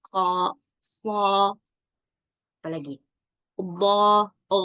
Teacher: Bukan karena kita buat mulut kita O, tapi karena terangkatnya pangkal lidah kita dengan kerongkongan ini ketika mengucapkan. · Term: isti'ala